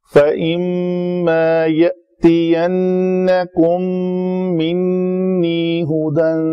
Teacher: حمزہ جو ہے جزم مجزوم ہو، جزم آ جائے تو اس کو تھوڑا جھٹکا دیا جاتا ہے۔